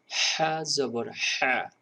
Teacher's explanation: এই হাটা একটু গলা চেপে চেপে বাতাস বের করবেন।